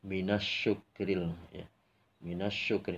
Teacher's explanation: Ini disebutnya alif lam syamsiyah. Jadi alnya itu dihilangkan langsung ke shin